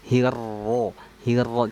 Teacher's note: dengan menebalkan huruf ro, caranya dengan mengangkat pangkal lidah ya. Hirro, hirro, tidak melibatkan bibir karena ini banyak sekali nih ketika kita ingin menebalkan huruf ro, bibir kita masih ikut-ikutan gerak ataupun sampai mencucu, monyong.